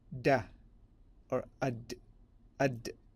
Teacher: the makhraj is the tip of the tongue against the upper teeth. The tip of the tongue, upper teeth, specifically the gum line, as we discussed just as in the prelude. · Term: dal